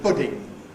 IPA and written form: ˈpʊdɪŋ (pudding)